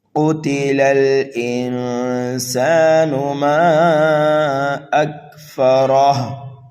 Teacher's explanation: قاف کو پر پڑھنا ہے، قاف حروف مستعلیہ میں سے ہے۔ تا کو جلدی پڑھیں گے، لام کو بھی جلدی پڑھیں گے، لام کو لام ساکن میں ملائیں گے۔